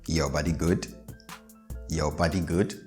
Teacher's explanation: even in English, I'm raising the tone of the last syllable